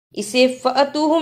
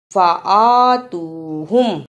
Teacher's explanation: الف پر کھڑی زبر ہے، اس پہ تھوڑی سی دیر لگانی ہے